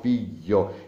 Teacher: un altro gruppo consonantico quello della gl sempre al sud malamente impiegato è scambiato quasi con una j